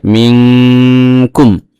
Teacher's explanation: নুন সেকেন্ডের পরে কাফ আসছে ইখফা অক্ষর, এই জন্য এই কালিফ গুণনা করতে হবে নাকের ভিতরে নিয়ে